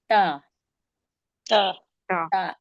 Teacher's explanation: जबान की नोक और ऊपर के सामने के दो दांतों की जड़ से अदा होता है।